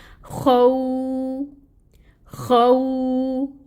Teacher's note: اس کو بہت نرمی سے پڑھیں گے اور خو کو جو ہے خراش کی آواز لانی ہے اس میں